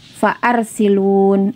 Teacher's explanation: Ya, kalau hamzah wasal iya dibaca farsilun. Namun ini bukan hamzah wasal, tapi hamzah qat', sehingga dibaca fa'arsilun. Jadi hamzah qat itu dimanapun tempatnya maka dia dibaca.